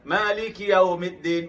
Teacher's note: Perhatikan setiap kali saya menyebut waw, mulut saya berbentuk ada u atau bulat ya. Jadi yaw agak bertempoh.